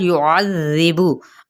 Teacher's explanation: होंठों की नातमाम गुलाई के साथ, युअज़्ज़िबु, आइन की ज़बर को ज़ाल के साथ नरमी से पढ़ना, और ज़िबु, और बड़ी नरमी के साथ इसको अदा करते हुए बाकी पेज को लंबा नहीं करेंगे।